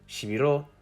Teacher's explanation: not on length but solely on pitch in the word shibiro the last syllable is higher pitched and therefore stressed but every syllable is still pronounced for the same amount of time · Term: pitch accent